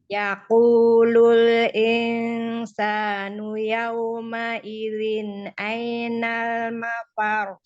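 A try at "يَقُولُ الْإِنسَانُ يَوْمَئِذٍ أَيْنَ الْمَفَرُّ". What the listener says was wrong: Masih kurang panjang gunnah pada ikhfanya. Yaqulul insanu yawma idzin ainal mafar. Mafaru karena roknya bertasydid dinaber. Mafaru. Iya, naikkan sedikit ya karena tasydid.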